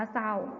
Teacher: ออกเสียงพยัญชนะตัวแรกเพียงตัวเดียว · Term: คำควบกล้ำไม่แท้